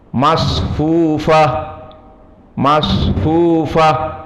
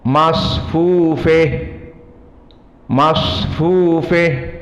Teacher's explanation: Maka sepakat jumhur yang 4 selain dari Al-Kisai, yakni Hafiz an Asim, Al-Kisai, Abu Amr dan Ya'qub Al-Hadrami, maka mereka semuanya membaca sama dengan fathati ha at-ta'nis, masfufah, masfufah. Adapun Al-Kisai berkesendirian qara'a bi imalah ha at-ta'nis, maka dibaca masfufeh, masfufeh.